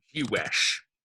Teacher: the stress is falling on the wesh, right? Because it's the final syllable.